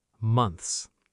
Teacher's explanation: The ending has three consonant sounds, n, th, and s. All together.